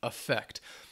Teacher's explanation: Affect, the verb, has that schwa at the beginning